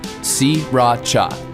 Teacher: Don't bother paying attention to that first R. Sriracha. 3 separate syllables.